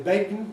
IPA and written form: ˡbeɪkn (bacon)